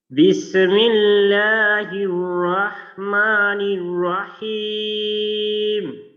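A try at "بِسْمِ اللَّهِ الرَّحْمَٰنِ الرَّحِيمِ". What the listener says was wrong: আচ্ছা সিনের মাঝে কিন্তু একটু ধাক্কা লাগলো, বিসে, বিসে, এইভাবে কিন্তু ধাক্কা দেওয়া যাবে না। আমরা জানি সিন রি খোয়া তাওয়াসুতের হরফ, তো এইখানে মাখরাজ থেকে নরম ভাবে এবং দুর্বল ভাবে মাখরাজের ব্যবহারটা হবে, আওয়াজটা বিসমিল্লাহ, বিসমিল্লাহ।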